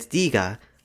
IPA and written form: diga (네가)